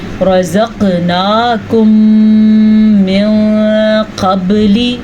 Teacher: جیسا کہ میں نے بھی پڑھا رزقناکم، قاف کے اوپر جھٹکا ہو رہا ہے، اس جھٹکے کی مناسبت سے حروف قلقلہ کا قاعدہ کہتے ہیں۔